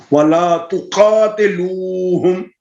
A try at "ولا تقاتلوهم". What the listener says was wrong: ولا تقاتل نہیں تا کے نیچے زیر ہے باریک کرے ولا تقاتلوهم